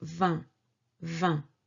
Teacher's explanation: And this syllable, 20, c'est une syllabe nasale. It means that we pronounce it from the nose.